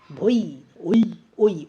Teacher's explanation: ও টা সম্পূর্ণ উচ্চারণ হচ্ছে ইটা কিন্তু সম্পূর্ণ উচ্চারণ হচ্ছে না অর্থাৎ এটা অর্ধস্বর ধ্বনি হয়ে গেল